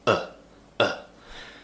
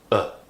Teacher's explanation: mouth is relaxed tongue is relaxed in the middle of the mouth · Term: schwar sound